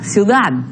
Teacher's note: esta D final se pronuncia hasta terminar los dientes